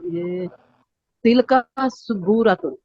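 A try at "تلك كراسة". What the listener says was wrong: تل کا سبورتن، سا بولیں، سین سین ہے. تل کا سبورتن، ٹھیک ہے، سین پہ فتح ہے، زبر ہے.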